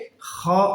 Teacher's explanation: হলকের শেষ ভাগ অথবা কণ্ঠনালীর শেষ ভাগ থেকে